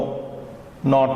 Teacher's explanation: The na is a simple dental sound. Na is like in no, not, etc.